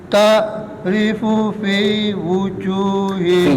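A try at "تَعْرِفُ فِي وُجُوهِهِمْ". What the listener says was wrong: Fi-nya panjang, fi-nya 2. Ta'rifu fi wujuh. Ngaten.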